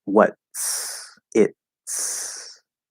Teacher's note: All you're doing a special kind of S that instead of starting in the normal S position that it just flows out, you're going into the T position and you're pushing the S through that. So it's actually an S that starts from the T position and gets squeezed out. Okay, so there's no actual T there.